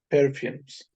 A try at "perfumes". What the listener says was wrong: And the S should be clearly pronounced. The S should be clearly pronounced. Boats. The S should be clearly pronounced.